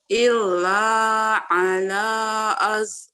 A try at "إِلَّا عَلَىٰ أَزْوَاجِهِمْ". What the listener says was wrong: Zanya masih keras ya, itu masih kayak kol-kolah.